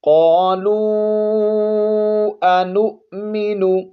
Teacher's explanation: قالوا، قاف کو موٹا پڑھیں گے، آگے مد کریں گے، مد منفصل